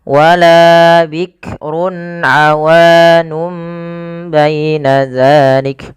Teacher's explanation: Nah, sehingga awalnya kan nun diganti dengan mim karena dia bacaan iklab, yaitu nunnya bertemu dengan huruf ba. Awalnya awanun menjadi awanum, maka di sini mim itu dianggap mati saja sehingga bunyi awanum.